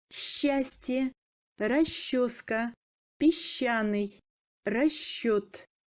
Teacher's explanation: SH se prononce comme Ш long, высший, масштаб, расшить, с шоколадом. SC passe en Ш мou long.